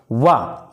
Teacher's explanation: वा जो होता है, वा अकेले, वा, ये वा दंत ओष्ठ होता है। दांत और ओठ दोनों से जो बोला जाए उसे वा बोलते हैं